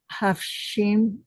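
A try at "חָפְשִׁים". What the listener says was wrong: It's a kamatskatan, a short O sound. Chofshim. And you had four, let's count them up, four kamatskatan vowels, didn't you? Kol, chofshim, and avod. They are very tricky. they look precisely like the long ah sound. looks exactly like an ah sound. It is also an o sound.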